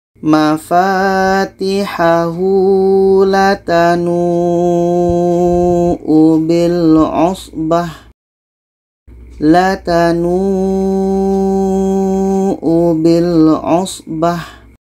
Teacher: Jadi nu ini panjang karena tanda mat dan waw mati.